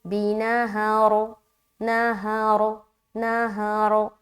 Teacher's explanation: تو رکنے کی صورت میں را کو موٹا پڑھیں گے